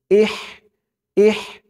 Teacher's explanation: হামজা দিয়ে হা ধরবে, হার উচ্চারণটা গলার ভিতর থেকে চিকুন হয়ে বের হবে।